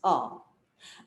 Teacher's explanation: A is the first sound that we human beings try to, when we speak, we utter. And it's the first vowel, and it starts from the root, guttural, from here, it starts A.